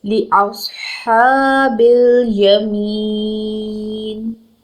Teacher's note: صاد is a heavy letter, it should be produced full of mouth. ہا کے اوپر کھڑی زبر ہے، دو حرکت لمبا کرنا ہے.